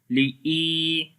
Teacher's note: ya is coming with sukun sign on it, and there is kasra before the ya. We long here 1 second. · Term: ya madda